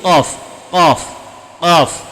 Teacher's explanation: Cuma ujung lidah berada naik ke atas. Pangkal lidah dekat, hampir mendekati anak tekak, naik ke atas.